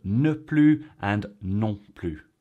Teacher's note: used in a negative sense, it's always pronounced plu